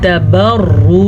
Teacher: रॉ को पुर पढ़ेंगे, रॉ के ऊपर पेश है इसलिए